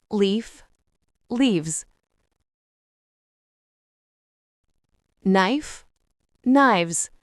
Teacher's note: Certains noms terminés par F ou FE, on remplace le F ou FE par VES. Le VES du pluriel se prononce en VZ.